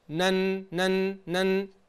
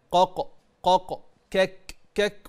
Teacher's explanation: مثال: انت عندك النون الساكنة من طرف اللسان نن نن نن، والقاف والكاف من أقصى اللسان قق قق كك كك، ومع ذلك بتقرأ بالإخفاء.